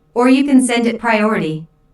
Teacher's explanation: notice the stress on or which emphasizes that there is another possibility